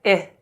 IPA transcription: i: